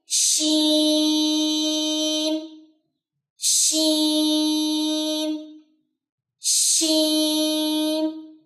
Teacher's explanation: اس میں چونکہ تفشی کی صفت ہے, آپ کی آواز پھیلنی چاہیے. اس کو کبھی بھی ایسے نہیں پڑھنا شین شین شین نہیں, شین.